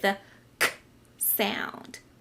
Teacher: I can feel the back of my throat make a little sound, and I can also feel my tongue touching the bottom of my teeth